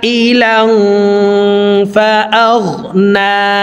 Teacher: আইলাং লাং এখানে ইকফা গুন্না, তানউইনের পর ইকফার হরফ আসছে, এই কারণে এই তানউইনওয়ালা লামটি নাকের ভিতরে লুকাইয়া গুন্নার সহিত পড়ব।